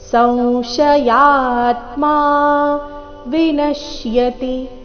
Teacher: ಸಂಶಯಾತ್ಮ ಈ ಶಬ್ದದಲ್ಲಿ ಅನುಸ್ವಾರದ ಉಚ್ಚಾರಣೆ ನಾಸಿಕವ ರೀತಿ